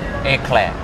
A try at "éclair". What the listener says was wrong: Yeah. You got it now. You act like a French person.